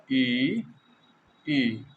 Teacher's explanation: मुख लगभग बंद होता है, ज़्यादा मुंह नहीं खुलता है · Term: संवृंत स्वर